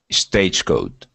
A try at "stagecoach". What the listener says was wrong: Give me a ch sound at the end. Stagecoach. Now at the beginning of the word, you're saying eh. S stage. Okay, so we want to go to the S sound first. Okay, stagecoach.